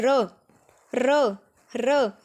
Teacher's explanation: जब हम र का उच्चारण करते हैं हमारे मुख में कंपन सी उत्पन्न हो रही है ना, इसीलिए जो र है वो लुंठित व्यंजन, कंपन जात या प्रकंपन व्यंजन होता है।